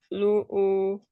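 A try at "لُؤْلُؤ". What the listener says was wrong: Coba ada sedikit sengau ya.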